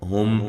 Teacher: میم ساکن کا اظہار ہے. غنہ نہیں کرنا